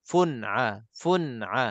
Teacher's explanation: jangan lambat fun dia akan jadi dengung tak sengaja Jangan kita terputus fun fun dan jangan kita terlantun fun fun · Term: izhar halqi